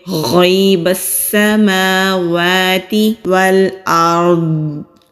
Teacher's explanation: میم اور واو کے اوپر دونوں کے اوپر کھڑی زبر ہے، کھڑی زبر کو ایک الف کے برابر کھینچ کر پڑھیں گے۔ غیب السماوات والارض، واو کو لام سے، حمزہ کو را سے ملائیں گے۔ · واو کو لام سے، حمزہ کو را سے ملائیں گے۔ را ساکن سے پہلے زبر ہے تو را کو موٹا پڑھیں گے۔